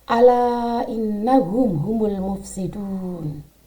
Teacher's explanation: Huna musyaddadah adalah nun bertasydid atau mim bertasydid, di mana nun dan mim itu harus dibaca dengung atau ditekan 2 harokat.